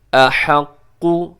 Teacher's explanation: جی یہاں وَنَحْنُ أَحَقُّ، اس میں جو قاف ہے اس کے اوپر تشدید ہے تو آپ نے اس کو مضبوطی سے پڑھنا ہے، أَحَقُّ، اور جب آپ کہیں قو تو آپ کے ہونٹ گول ہونے چاہیے، اگر ہونٹ گول نہ ہوئے تو پھر نتیجہ یہ نکلے گا کہ یہ مجہول پڑھا جائے گا۔